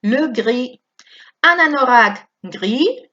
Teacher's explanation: Atención que la S no suena